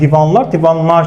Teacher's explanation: Mənim L-ım keçib N-ya avtomatik olaraq.